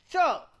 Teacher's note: tip of the tongue touches the dental region to produce the plosive part, and after the plosive, tongue is curled, the tongue is pushed back and touches the post-alveolar region to produce the friction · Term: affricate